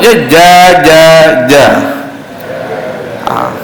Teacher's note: sifat dia jahar, tidak ada semburan, tidak ada hembusan, dia bukan hamas, dia jahar, dia tidak ada angin. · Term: huruf jim